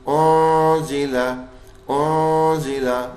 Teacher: اونزیلا اونزیلا، یہ بھی اخفا کا غنہ ہے. زا کی آواز ہلکی سی سیٹی دے رہی ہے